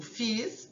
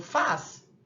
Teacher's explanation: É diferente quando eu digo fiz e quando eu digo faz, né? Então nós temos aí uma alternância vocálica que vai indicar o i passado e o a presente